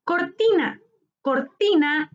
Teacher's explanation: Cortina es una palabra grave. Su sílaba tónica está en ti, penúltima sílaba.